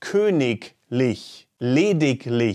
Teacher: ig is realized as an exclusive k sound namely when the ig is followed instantly by the syllable li